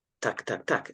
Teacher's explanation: the tip of my tongue is a little bit flatter, and it's almost like the front of my tongue partly touches the teeth and the ridge at the top